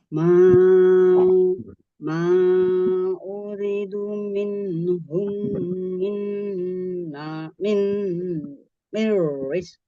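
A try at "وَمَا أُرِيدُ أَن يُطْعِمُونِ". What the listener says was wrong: Ulang ini. Ri-nya panjang nih. Ri-nya man. Ri-nya mad itu panjang.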